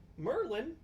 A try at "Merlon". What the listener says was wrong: Merlon. It's an O.